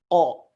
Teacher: It's not like from kha or ghain where it comes from, but Qaf, it is on the back end of the tongue. Qa.